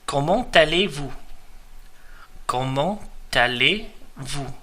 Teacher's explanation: the T from the end of the word comment merges really onto the second word aller